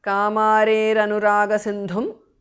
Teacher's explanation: Visarga changes to repha.